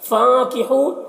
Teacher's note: فانکحو نون میں یہاں پر اخفا ہوگا، نون کی آواز کو ناک میں چھپا کر پڑھیں گے۔ ہو یہاں پر واو مدہ ہے، اسے ایک الف کے برابر کھینچ کر پڑھیں گے۔